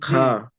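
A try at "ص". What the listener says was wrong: খা নয়, এটা খা হবে না, বুঝতে পেরেছেন?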